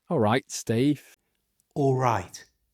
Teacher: It's not all right. It's alright. It has a tiny w sound in it.